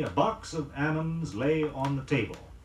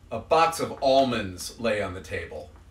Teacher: Notice that the L is not pronounced in almond